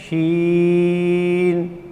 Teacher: وسط زبان اور بالمقابل اوپر کا تالو جب لگتا ہے تو یہ شین، کیسے؟ شین، یہ شین ادا ہوتا ہے۔